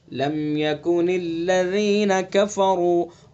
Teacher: را کو پر پڑھیں گے چونکہ را کے اوپر پیش ہے